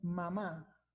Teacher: se dan cuenta cómo utilizamos ambos labios